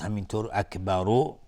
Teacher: حروف استعلاء و را هم حکمش استعلاء چون فتحه داره، اکبر اگر توقف کردیم اکبر با سکون را و را مفخم میشه